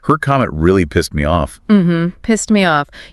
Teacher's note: You might barely hear that final T sound. · We learn it as a D or T, but often, like with pissed, it's a very soft T. Almost disappears sometimes.